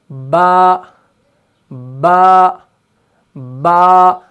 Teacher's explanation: तो जैसे हम पढ़ते हैं बा बा बा, आप इस हरफ को पढ़ें और आप ये महसूस करेंगे कि ऊपर वाले होंठ का जो गीला वाला हिस्सा है ये निचले वाले होंठ के गीले हिस्से से चिपक रहा है, मिल रहा है। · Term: हरफ बा